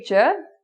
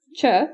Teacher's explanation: The only difference is when you say j, there's a vibration in your vocal cords.